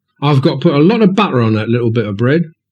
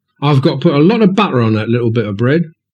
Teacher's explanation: you see how they produce those glottal stops that is one of the positions of the vocal folds · the T is replaced with a glottal stop.